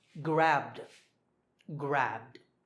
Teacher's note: the last sound is b. Remember, b is voiced, so grabbed, grabbed